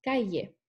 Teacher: El yeísmo se llama a la ausencia de la lateral palatal, pronunciación ya, que en la palabra de ejemplo se pronunciaría calle.